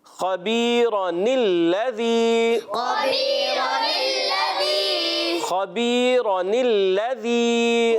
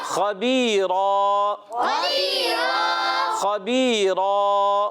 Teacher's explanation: تنوین کی نون کو زیر دے کر اگلے کلمے سے ملاتے ہیں تو نون قطنی ہو جاتا ہے